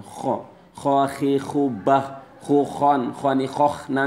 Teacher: kho dibaca pada pangkal tenggorokan